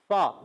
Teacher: فا کی ادائیگی اوپر والے دانتوں کے کنارے نیچے والے ہونٹ کے تر حصے سے لگتے ہیں